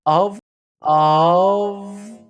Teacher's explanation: He says he uses the E as a schwa sound here. He himself does not pronounce the word of using a schwa.